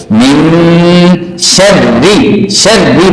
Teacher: گے میم، شین زبر وا، شر وا زیر بی، شر بی۔ جب را پہ زیر آ گئے تو پھر اس کو باریک کر کے پڑھنا ہوتا ہے